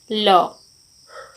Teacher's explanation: Number 4, पार्श्विक। हवा की जिह्वा के किनारे से होकर निकलते हैं।